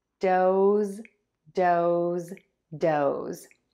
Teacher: And then for o, I open my mouth, and then I move to a pucker. As I do this, the tip of my tongue starts low in my mouth, and then ends flat in the middle of the mouth. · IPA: /doʊz/